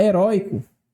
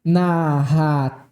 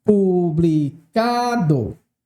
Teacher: tonicidade recai sobre a penúltima sílaba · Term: paroxítona